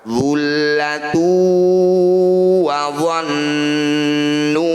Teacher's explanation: Nun atau mim yang bertanda tasydid seperti ini disebut bacaan gunnah musyaddadah. Jadi cara bacanya bunyi nun ini kita dengungkan. Dengung itu sama dengan ditahan. · Dhammah tanwin bertemu waw disebut bacaan idgham bi gunnah. Bunyi dhammah tanwin masukkan pada huruf waw, kemudian didengungkan 2 harokat.